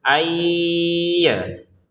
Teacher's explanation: Untuk nun bersukun bertemu ya, masukin nunnya ke ya disertai dengungan ayya. Jadi jangan sekedar ayya saja ya.